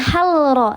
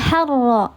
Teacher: dibacanya dia dileburkan, tidak dijelaskan lamnya. Harro bukan halro tapi harro langsung dileburkan ke huruf yang bertasydid. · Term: lam syamsiyah